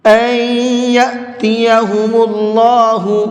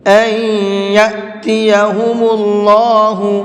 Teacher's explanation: این کے اندر غنہ کریں گے، اس لیے کہ نون ساکن کے بعد میں یا ہے